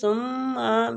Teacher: سا نرمی والا حروف ہے، سین پہ اس کا مخرج نہ جائے